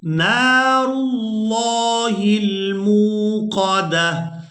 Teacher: لفظ اللہ کے لام کو ہم پورا ادا کریں گے جب اس سے پہلے والے حرف پر زبر یا پھر پیش ہوگی، تو وہاں پر ہم نے لفظ اللہ کے لام کو پورا ادا کرنا ہے، اور اگر اس سے پہلے والے حرف کے نیچے زیر ہوگی تو پھر ہم نے لفظ اللہ کے لام کو باریک ادا کرنا ہے، اور یہ قاعدہ صرف لفظ اللہ کے لام کے لیے ہے۔